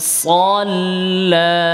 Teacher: লাম মোটা না, সল না, সদ মোটা, লামে গেলে পাতলা